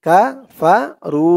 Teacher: রু এক আলিফ টান, পেশের পরে ওয়াও সাকিন।